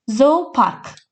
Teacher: Əgər sözdə iki O saiti yanaşı gələrsə, bir uzun O səsi eşidirik.